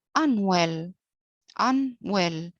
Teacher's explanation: Well is stronger than un. So well is stressed, while un is unstressed. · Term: iambic